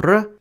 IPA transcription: r